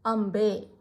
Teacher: ಇದು ಪವರ್ಗಕ್ಕೆ ಸೇರಿದ ಅಕ್ಷರ. ಪವರ್ಗದಲ್ಲಿ ಕೊನೆಯಲ್ಲಿ ಬರುವ ಅನುನಾಸಿಕ ಅಕ್ಷರ ಮ್. ಹಾಗಾಗಿ ಇಲ್ಲಿ ನಾವು ಅಂಬೆ ಅಂತ ಓದ್ತೀವಿ. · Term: ಅನುಸ್ವಾರ